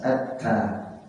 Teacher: Jadi tak dulu, gigi depan ta dan o. Jadi posisi ta itu di gusi tempat tumbuhnya gigi atas